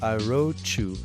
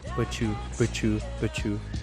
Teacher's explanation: the liaison rule T plus Y here, which becomes cha in English